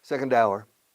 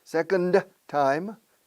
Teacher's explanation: La única vez que se oye la D es si la siguiente palabra empieza por sonido de vocal.